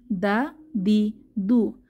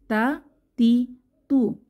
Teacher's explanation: পেশ তু তা তি তু তা এবং দাল এই হরফ দুটো জিহবার আগা উপরের দাঁতের গোড়ার সঙ্গে লাগিয়ে উচ্চারিত হয়